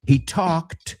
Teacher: Y sé que es bastante difícil esa palabra porque tiene la L muda.